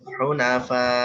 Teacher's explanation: huna hamzah mentok suaranya ya. Nah, dia agak ditekan.